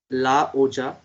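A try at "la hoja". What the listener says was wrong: oja no okha. J is kha sound.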